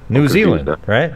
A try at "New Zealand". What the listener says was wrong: Yeah, see, you're saying N-U. You're not pronouncing any. Kind of. Just new.